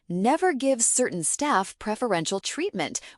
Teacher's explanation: Certain staff was linked together and preferential was said softly. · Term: connected speech